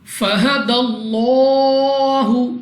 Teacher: لام اف اللہ ہے، لام اف اللہ سے پہلے حرف پر زبر، تو اس لام اف اللہ کو پر یعنی موٹا پڑھیں گے منہ اور آواز کو کھول کر اور 2 سیکنڈ تک اس کو کھینچنا بھی ہوگا.